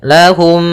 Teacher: bertemu dengan mim yang serupa maka itu kita namakan dengan idamimi cara membacanya mim yang pertama dimasukkan kepada mim kedua dan ditahan gunahnya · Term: idgham mimi